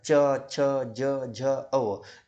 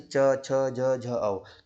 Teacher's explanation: कंठ से जैसा आप क, ख, ग, ग और अंग बोल के देखो आपको यहां से कंठ तालिका से ही उसका उच्चारण स्थान हो रहा है। च वर्ग के मेरे भाई सब तालु से इसका उच्चारण स्थान होता है।